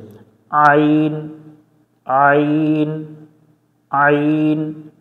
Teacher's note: আইন অক্ষর হলকের মধ্য থেকে একটু চেপে পড়তে হয় হলক অর্থাৎ গলার মধ্য থেকে কণ্ঠনালীর মাঝখান থেকে একটু চেপে পড়তে হবে